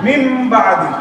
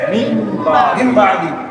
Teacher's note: নুন সাকিনের পরে যদি একটা হরফ বা যদি হয়, তখন ওই নটা ময়ে পরিবর্তন হবে। নটা কিছু পরিবর্তন হবে, ময়ে পরিবর্তন হবে।